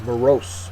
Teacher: second syllable is accented